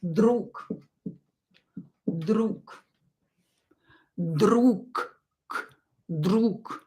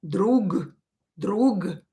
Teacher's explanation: so voiced consonant at the end of the word will become unvoiced